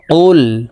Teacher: কফ হরফের উচ্চারণ জিহ্বার গোড়া তার বরাবর উপরের তালুর সঙ্গে লাগাইয়া উচ্চারণ করে পড়তে হবে কফ লাম পেশ কুল এই কফ জজমওয়ালা লাম কে ধরবে কফ